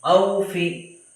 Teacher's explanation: واو ساکن سے پہلے زبر ہو تو واولین ہوگا، واولین کو نرم آواز کے ساتھ جلدی ادا کرنا ہے، لانگ نہیں کرنا ہے